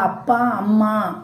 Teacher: அப்பா, அம்மா அப்படின்னு சொல்றப்போ உதடுகள் வந்து ஒட்டும்